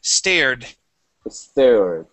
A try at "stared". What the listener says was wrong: All right, taking off that eh at the beginning, so stared. Okay, really good job.